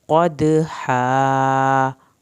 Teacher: والعادیات ضبحا، فالموریات، لام کو نہیں ہلانا، واو ساکن کو کھینچیں ایک الف کے برابر، موریاتی، را کی زیر کو لمبا نہیں کرنا، یاتی قدحا، یہاں پر قاف کو آپ نے پر کرنا ہے، دال پہ قلقلہ کرنا ہے، ہا کو حلق سے پڑھنا ہے اور الف پوری ادا کرنی ہے